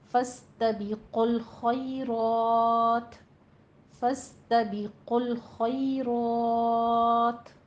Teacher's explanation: आगे खई में या लीन आ रहा है, रॉ में रॉ मुफ़ख्खम पड़ी जाएगी और फतहा कायमा है, 2 काउंट करना है। आखिर पर आप वक्फ मुतलक करने लगे हैं, ता को साकिन करना है तो ता पर हमस पैदा होगा।